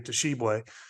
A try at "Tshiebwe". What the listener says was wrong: Tshiebwe. There's no T. Just Tshiebwe. No Tshiebwe. Just Tshiebwe.